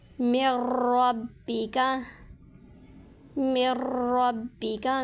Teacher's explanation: نون ساکن کے بعد حروف یرملون میں سے را آ گئی تو یہاں پر ادغام ہوگا غنہ کے بغیر۔ میم کو را کے ساتھ جوائن کریں گے، ملائیں گے۔